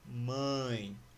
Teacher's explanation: O som, ele não só sai pela boca, ele sai também pelo nariz, por essa fossa nasal. Quando acontece isso, quando o som ele é mais nasalado, o ditongo ele é nasal.